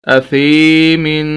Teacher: سا کو یا کے ساتھ ملائیں گے اور سا کو لمبا کریں گے کیونکہ یہ حروف مدہ میں سے ہیں. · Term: یا مدہ